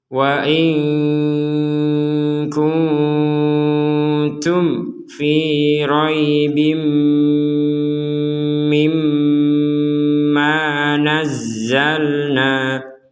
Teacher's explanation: Nun mati bertemu kaf, kita baca samar.